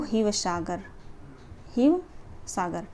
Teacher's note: असम के जो लोग थे ना वो तालव्य श को जो है ह बुलाते थे